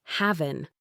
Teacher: in casual speech, the final G sound is often dropped. So having becomes having.